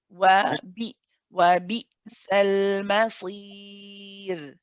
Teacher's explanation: when it has a sakin, when we're joining it, it has a quality of shidda, and this means that the sound cuts off